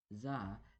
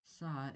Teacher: za is the voice version of saw and so has a certain vibration produced by the vocal cords